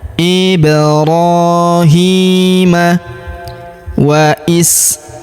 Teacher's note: Huruf hi kita panjangkan 2 harokat karena terdapat alif kecil di bawahnya.